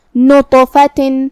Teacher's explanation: کلمت نطفہ میں یہاں حرف الطا ہے. طا حروف التفخیم میں سے ہے تو ہم اسے بھاری آواز میں منہ پھلا کے ادا کریں گے. جو کہ اس پہ جزم ہے تو طا بھی حروف القلقلہ میں سے ہے.